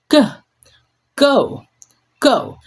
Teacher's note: Block and release, but now the throat vibrates strongly as it is voiced.